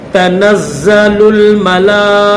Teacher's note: پھر میم زبر م، لام کھڑا زبر لا، تو یہ لام درمیان میں، لام کے اوپر یہ کھڑا زبر بھی ہے اور یہ بڑی مد بھی ہے، تو 5 الف کی مقدار میں کھینچیں گے